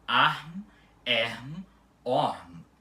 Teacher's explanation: E também a letra M é altamente frequente no final das palavras em balborano e pode até mesmo aparecer depois de vogais aspiradas, como por exemplo arm, erm, orm. Ela continua com o fonema M e não nasalizando a vogal anterior